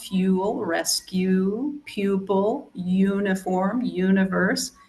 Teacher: And then, of course, there's the U sound, and this has the Y sound before the U